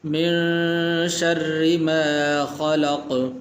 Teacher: را کے نیچے زیر ہے، تو زیر ہونے کی وجہ سے اس کو موٹا نہیں کریں گے، پر کر کے نہیں پڑھیں گے بلکہ اس کو باریک پڑھیں گے